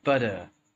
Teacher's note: people from USA will often pronounce a t almost like a d rather than than saying but uh you would say butter literally